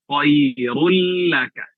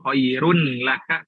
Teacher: Di situ ada huruf ro berharokat dhammatain, tanwin ya, bertemu dengan lam, maka dibaca idgham bila gunnah, dimasukkan tanpa digunakan.